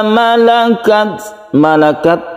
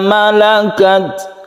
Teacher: Ketika kita membaca sukun tak kita berhembus nafas sedikit ya. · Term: hamas